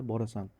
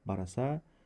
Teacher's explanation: ayrim o'g'iz va shimoliy o'zbek shevalarida n undoshi talaffuz qilinmaydi